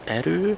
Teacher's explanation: Last vowel is an ö, it's rounded. So you take the front rounded suffix, which is hers in this case, and then you have erő, hers.